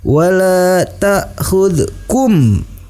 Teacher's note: Wala ta'khudkum, hukum bacaannya adalah ikhfa syafawi, dibaca dengan disertai dengung ke hidung